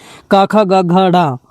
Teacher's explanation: यानी कि कंठ से इनका उच्चारण होता है। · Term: क वर्ग